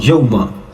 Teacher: سمجھ جائیے کہ واو لین کا ہے، جلدی سے پڑھ کے نکلیں گے، یہاں پر کھینچیں گے نہیں. یا وا زبر یو، میم زبر ما، یوما.